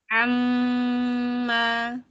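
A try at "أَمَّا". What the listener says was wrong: Ringankan hamzahnya. Jangan tapi amma.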